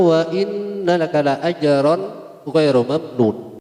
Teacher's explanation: Nun tasdid itu dibaca gunnah atau ditahan kira-kira 1 alif